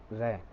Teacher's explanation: प्रकंपित वर्ण यानी वह वर्ण जिसके उच्चारण के लिए हमारी जीवा को कंपित यानी कंपन करना पड़ता है